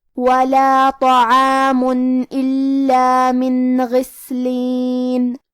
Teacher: کلمت غسلین میں حرف الغین کو ہمیں موٹی آواز میں پڑھنا ہے، اور ہم حرف السین کو ہمزے سے پڑھیں گے کیونکہ اس پہ جزم ہے۔